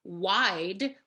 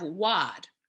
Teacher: I want to scoot down to number 15, which was what I had just about to start on our last example, and that's the idea of the diphthong becoming the monophthong. So instead of wide, we have wad.